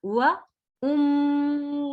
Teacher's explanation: मीम पर गुन्ना होगा, स्टे करना है। व उम्मिही, मी को नहीं खींचेंगे, जेर है, हा को खींचेंगे, उसके नीचे खड़ी जेर है इसलिए।